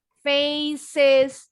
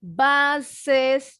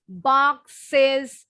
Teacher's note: karena final S-nya bunyinya IZ, bunyinya is, jadi kita nambahin bunyi satu suku kata lagi. Faces, jadi ada 2.